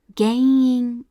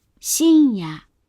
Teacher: we exhale through both our mouth and our nose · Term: nasalized vowel